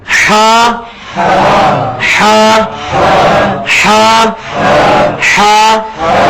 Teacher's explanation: جو حلوائی والی ہے نا, اس کو وسط حلق سے نکالنا ہے, حلق کے درمیان سے.